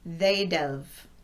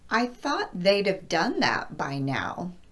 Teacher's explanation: first going to contract they would into they'd, and then I'm going to add have by just saying of. So they would have in its contracted form would sound like they'd have.